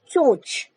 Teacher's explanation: यहाँ पर अनुनासिक की ध्वनि आ रही है, अनुस्वार की ध्वनि नहीं है, न की, अंग की ध्वनि नहीं है, चोंच, है ना।